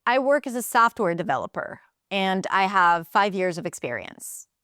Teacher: But if you are certain, then understanding that the rising intonation at the end is not ideal and you want to drop it at the end